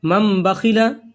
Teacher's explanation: تنوین یا نون ساکن کا قاعدہ: تنوین یا نون ساکن کے بعد با آئے تو نون کو میم سے بدل کر غنہ اور اخفا کے ساتھ پڑھیں گے۔ اس تختی میں ایک قاعدہ بتایا گیا ہے کہ تنوین یا نون ساکن کے بعد با آئے تو اس نون کو ہم میم میں بدل دیں گے اور غنہ اور اخفا کے ساتھ پڑھیں گے۔ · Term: اقلاب